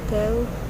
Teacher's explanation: when pronouncing his name we say Thales, emphasizing the first syllable